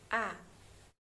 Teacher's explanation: Yang keenam adalah bunyi A pada kata Imelda. A di sini merupakan bunyi vokal tinggi rendah lidah rendah bawah, gerak lidah bagian depan, struktur terbuka, bentuk bibir tak bulat.